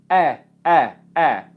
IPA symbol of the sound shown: eɪ